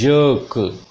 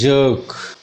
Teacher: इसमें भी E के बाद R आया हुआ है, तो ज, this ja sound, then long sound of a, and ra will not be pronounced because the sound ra is followed by ka sound, consonant sound. This is jerk.